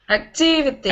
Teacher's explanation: in english it's not activities it's on the second syllable